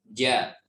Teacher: Huruf jim, kita rasakan aja. Ketika kita mengucapkan huruf jim, maka akan posisi lidah ini, bagian tengah ini akan naik ke atas dan menempel. Menempelnya cukup kuat.